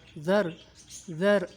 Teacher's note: ذال را زبر ذر، ذر، ذال کو نرمی سے پڑھیں گے، را کو خوب موٹا کریں گے